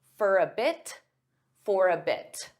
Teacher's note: sometimes native speakers will pronounce the T in this case because it's at the end of a sentence. There's a period.